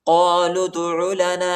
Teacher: قالوا ادع لنا ربك يبين لنا ما هي قاف کو موٹا پڑھیں گے، لام کو دال کے ساتھ ملائیں گے اور دال کو جٹکا کے ساتھ پڑھنا ہے۔ دال حروف قلقلہ کا حرف ہے، ٹھیک ہے۔